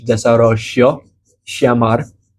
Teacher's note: depending on the region, they may pronounce it sh